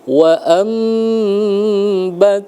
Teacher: makhrajul huruf ba itu bersentuhan antara bibir atas dengan bibir bawah